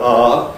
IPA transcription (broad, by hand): ɹ